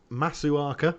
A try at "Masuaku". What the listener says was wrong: Masuaku. Mispronunciation. Yeah, Arthur Masuaku. No, it's a U. Yeah. I feel like that's one of those instances where you go, oh, I can pronounce this now, I've got it, and you don't even look how it ends.